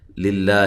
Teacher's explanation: لفظ اللہ کو باریک پڑھنا ہے، اس سے پہلے زیر ہے